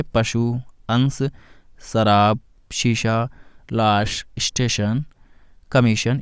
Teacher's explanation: बड़ा शाह के उच्चारण में जिह्वा तालु को स्पर्श करती है, वहाँ छोटा शाह के उच्चारण में जिह्वा दांत को स्पर्श करती है।